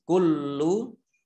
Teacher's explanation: lam tasdid dibaca double.